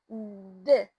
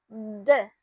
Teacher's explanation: And place of articulation, alveolar is the tongue tip touches the alveolar ridge. That's the bumpy part behind your top of front teeth to create the constriction.